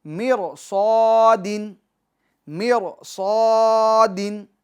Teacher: پور پڑھیں گے، موٹا پڑھیں گے، چونکہ را ساکن سے پہلے زیر اصلی ہے اور حروف مستعلیہ میں سے صاد اسی کلمے میں ہے